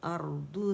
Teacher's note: ارضو دو نہیں پڑھیں گے، ٹھیک ہے. ارضو کو لمبا نہیں کریں گے، صرف را کی آواز تھوڑی سی چلے گی توسط کی وجہ سے